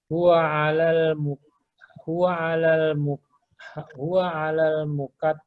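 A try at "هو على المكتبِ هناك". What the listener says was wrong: Ya, bukan mukatabi. Maktabi.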